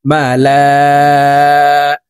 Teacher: তো আমরা এই লামকে চার আলিফ টানে পড়বো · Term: মুত্তাসির